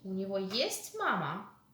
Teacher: The interrogative sentence, rising intonation.